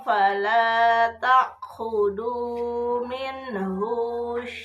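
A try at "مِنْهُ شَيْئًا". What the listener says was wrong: Rusukeun minhu syai'a. Huna pendek.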